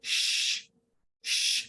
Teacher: अच्छा, जीम के बाद जो शीन है ये फैलता है, इसको कहते हैं तफशी। ये शीन की एक खास सिफत है कि जब शीन पढ़ा जाता है तो उसकी आवाज फैल जाती है। इसीलिए हम आम जबान में जब किसी को चुप कराते हैं हम पढ़ते हैं श, इसलिए पढ़ते हैं क्योंकि शीन की आवाज ज्यादा फैलती है, इसीलिए शीन की जो आवाज है वो फैलती है।